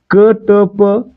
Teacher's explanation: ह चा उच्चार होत नाही त्याला आपण काय म्हणतो अल्पप्राण म्हणतो